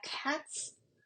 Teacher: En español, perdón, en inglés tenemos la palabra cats, que se pronuncia cats, porque el sonido que viene delante de la S es un sonido sordo